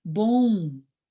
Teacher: Quando a palavra bom, olha como entra o ou antes do M.